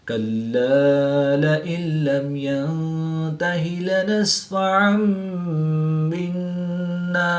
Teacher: دو زبر کی تنوین کے بعد حرف با ہے تو یہاں پر اقلاب ہوگا، یعنی دو زبر کی تنوین کو میم سے بدل کر غنہ زمانی کر کے پڑھیں گے